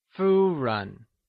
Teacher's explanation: Ren is pronounced using the neutral tone · Fu is pronounced using the high level tone, or the first tone, while run is pronounced using the neutral tone